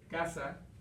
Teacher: la palabra casa tiene la entonación en la penúltima sílaba porque termina en vocal